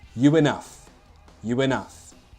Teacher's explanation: at the end of the word you, the mouth shape is like oo. And we link the two words together with a consonant sound which closely matches the mouth shape. In this case, oo is similar to w. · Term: intrusion